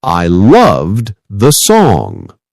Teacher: In words like loved, the e d sounds like a soft duh.